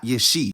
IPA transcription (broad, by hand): jeˈʃi